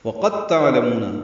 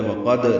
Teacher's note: واو ہونٹوں کی نا تمام گلائی سے قاف پر کر پڑھیں گے، دال ساکن ہے، اصولی طور پر قلقلہ ہوتا ہے وقد، لیکن یہاں پہ نہیں ہے کیونکہ دال اور تا کا ایک ہی مخرج ہے، پہلا حرف ساکن ہو اور دوسرا حرف وہی ہو تو دوسرے پر تشدید لاتے ہیں۔